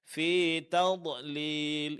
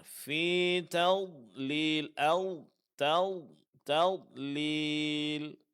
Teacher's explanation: sifat yang paling menonjol pada huruf d adalah sifat istitalah. Yaitu suara agak memanjang dalam pengucapannya.